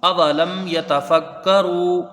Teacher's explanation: لام کو میم سے جب ملائیں گے، میم ساکن کے بعد یا ہے، تو یہاں اظہار شفوی ہوگا، یعنی میم کو ظاہر کر کے بغیر غنہ کے جلدی پڑھا جائے گا. میم میں ایک الف کی مقدار غنہ نہیں ہوگا بلکہ اس کو جلدی پڑھیں گے.